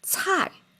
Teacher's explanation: Okay, this one, it doesn't sound exactly as what we talked about yesterday, which is cai, because cai is the third tone, and this one is cai, the fallen tone, the fourth tone